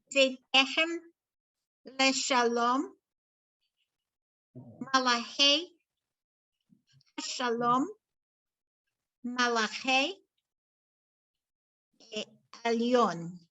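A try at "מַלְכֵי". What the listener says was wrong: Okay, just make sure on that malchei that you're not over pronouncing under the lamed because there's nothing there, right? So don't over pronounce it. You'll be fine. Nobody's taking you to jail or stopping you in a Torah reading for putting that extra sound in there.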